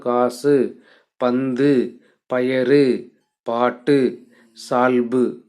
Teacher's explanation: ஆகிய ஆறு வலி உகரங்களும் சொல்லின் இறுதியில் வரும் சொல்லின் இறுதியில் வரும் வரும்பொழுது ஒரு மாத்திரைக்கு பதிலாக அரை மாத்திரை அளவே ஒலிக்கும் தனக்குரிய முழு மாத்திரையிலிருந்து குறைந்து ஒலிப்பதுதான் நம்ம குற்றியல் உகரம் அப்படின்னு சொல்றோம் அதற்கு